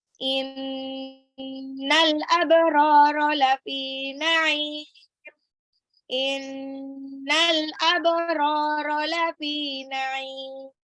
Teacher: Inna nunnya gunnah, al abrara alif lam qamariyah, ba-nya qalqalah, ro-nya 2 harokat, lafi fa-nya 2 harokat, na'im ainnya itu mad alif disukun karena dia mad tabi'i yang bertemu dengan huruf hidup yang disukunkan.